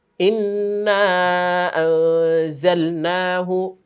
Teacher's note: ইন্না আনজালনাহু, এখানে আবার আমরা পাচ্ছি কি নুন সাকিনের পরে জা, তার মানে ইকফার গুন্না